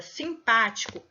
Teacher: na palavra simpático, a sílaba tônica é a sílaba pá. E ela a sílaba tônica é a antepenúltima, né?